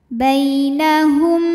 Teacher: ada ya sukun yang sebelumnya berharakat fathah maka dibacanya lembut atau lunak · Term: harfulfulin